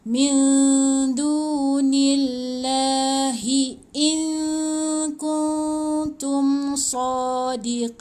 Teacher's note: in dengungkan in kun tu pun dengungkan, jangan sebut kun. Sebab dia dah bunyi ikhfa ni.